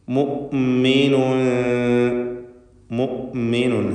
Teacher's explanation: ഹംസ വ്യക്തമാക്കുക, അഥവാ മൂമിനുൻ എന്നായി പോകരുത്.